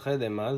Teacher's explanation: the first two vowels are the same unrounded mid-vowel because they don't have that extra rounding dot, and because they're drawn in the middle of the mouth. · Like you can see in the word khedema that the first consonant is a fricative, the middle consonant is pronounced at the front of the mouth, and the last consonant is pronounced with both lips